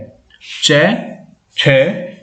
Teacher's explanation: च का उच्चारण स्थान है तालु